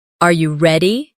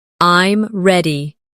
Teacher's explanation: your voice often goes up at the end of a question, Are you ready? and goes down at the end of a statement